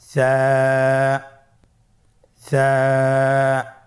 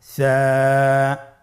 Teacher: সা হরফটির মাখরাজ হলো উচ্চারণ স্থান জিহ্বার আগা সামনের উপরের 2 দাঁতের আগার সঙ্গে লাগিয়ে উচ্চারিত হয়